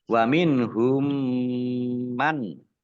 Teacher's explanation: Mim tasdid dibaca runah atau mendengung, ditahan dua harokat. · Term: idgham mimi